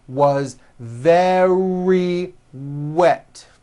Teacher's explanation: Remember very starts with a V sound followed by a strong R.